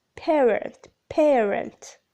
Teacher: in word medial position the second element tends to be neutral as in parent